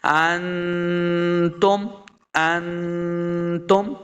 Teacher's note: نون یعنی ساکن کے بعد تا حروف اخفا سے ہے تو یہاں پہ غنہ کریں گے